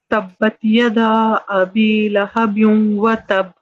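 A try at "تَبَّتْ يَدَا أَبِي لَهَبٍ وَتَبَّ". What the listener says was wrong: لہبیوں تھوڑا سا کھینچیے, پھر سے پڑھیے, اور یدا کا دال کو بھی کھینچیے.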